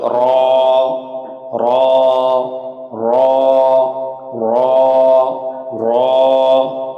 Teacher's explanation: জিহ্বার আগার পিঠ তার বরাবর উপরে তালুর সাথে লাগিয়ে 1 আলিফ টেনে পড়তে হবে